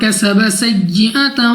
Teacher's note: سین کو سختی سے سیٹی والی آواز کے ساتھ پڑھا جائے گا